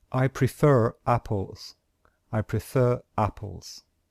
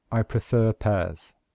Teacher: we only pronounce the R at the end of prefer if the next word starts with a vowel